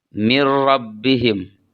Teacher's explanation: ada nun sukun kemudian ada Ro maka nunnya dimasukkan ke dalam ro